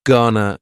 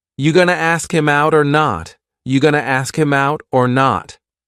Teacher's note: Gonna is generally pronounced with the schwa.